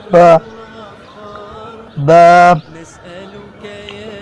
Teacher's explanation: दोनों होंठों के तर हिस्से से अदा होता है